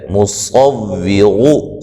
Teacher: مصور صاد کو موٹا ادا کریں گے، را کو موٹا ادا کریں گے